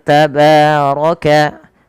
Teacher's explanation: tabaroka ba Mad thaabii fathah bertemu Alif kecil pada lafal bnya rnya tebal karena dia berharakat fathah